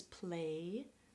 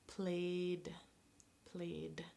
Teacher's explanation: Okay, the last way it can be pronounced is like D. So not an extra syllable, not ID, but just the D sound